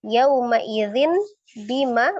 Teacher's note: Bunyi nun sukun menjadi mim sukun. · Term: iqlab